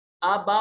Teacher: یہ بڑی مد ہے، 3 سے 4 الف کے برابر اس کو لمبا کریں گے